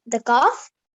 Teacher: the oh sound comes right from the back of your mouth the top of your throat